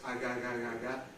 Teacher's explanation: if you don't make the closure complete, you get just aga. That's a voiced velar fricative. And, well, it sounds drunk in English.